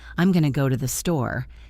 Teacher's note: Notice how the word's going to become gonna, and how the voice goes up and down.